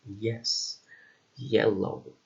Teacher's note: And finally, we have Y, or in this case, ye, which is a voiced, palatal, and light sound, like in yes, yellow.